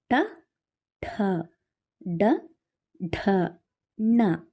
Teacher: ನಿಮಗೆ ಪಕ್ಕ clarity ಸಿಕ್ಕಿರುತ್ತೆ okay next ಮೂರ್ಧನ್ಯ ಅಕ್ಷರಗಳು ಮೂರ್ಧ ಭಾಗದಲ್ಲಿ ಅಂದರೆ ನಾಲಿಗೆಯನ್ನ ಹಿಂದೆ ಚಾಚಿ ಬಾಯಿಯ ಮೇಲ್ಭಾಗವನ್ನು ಸ್ಪರ್ಶಿಸಿದಾಗ ಈ ಅಕ್ಷರಗಳು ಉಚ್ಚಾರಗೊಳ್ಳುತ್ತವೆ ಅಂತ ಅಕ್ಷರಗಳು ಯಾವುವು ಅಂದ್ರೆ ಠ ವರ್ಗ ಟ ಠ ಡ ಢ ಣ